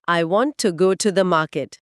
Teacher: उस वाक्य में हम टू को पूरे ऊ की ध्वनि के साथ नहीं बोलते जैसा डिक्शनरी में लिखा होता है। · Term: वीक फॉर्म्स